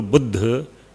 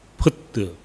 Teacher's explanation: elision of the final A in A ending Pali word is general feature of Thai